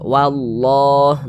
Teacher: Atau ada lafaz Allah sebelumnya sini ada tanda baca dhammah, maka lafaz Allah dibaca tebal, seperti itu, dibaca tabkhim